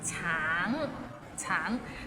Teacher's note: the end has a little ng, so it's a bit of nasal sound. Tang, tang.